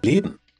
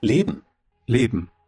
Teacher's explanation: Not only he tries to omit the letter A, but also N makes it M. Here we extend this letter A, but here we try to omit it.